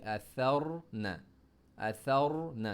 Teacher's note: सा को सॉफ्ट पढ़ रहे हैं, सा में ज़बान बाहर आ रही है